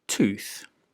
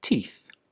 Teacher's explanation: look at those examples one tooth but the plural is teeth can you see how the vowel in the middle of the word changes from a long oo sound to a long e sound